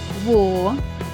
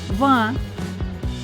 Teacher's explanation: звук в приголосний бо повітря що виходить з ротика зустрічає перешкоду нижню губу та верхні зуби коли ми вимовляємо звук в наше горлечко тримти тому що голос працює звук в дзвінкий звук в твердий і при звиковому аналізі позначається